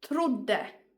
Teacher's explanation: two consonants that are the same. So the emphasis goes there and the o becomes short.